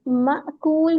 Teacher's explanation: मकूल हमजा है हमजा साकिन पे झटका होता है